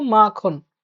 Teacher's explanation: যেমন মাখন শব্দটাতে যে মা উচ্চারণটা হচ্ছে সেখানে শ্বাসের আধিক্য লক্ষ্য করা যাচ্ছে। মা, ক্ষণ, মা, ক্ষণ, এখানে মা হচ্ছে মুক্ত দল আর খন হচ্ছে রুদ্ধ দল। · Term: শ্বাসাঘাত